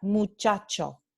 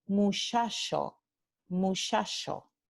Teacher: debilitamiento de la africada prepalatal sorda a una fricativa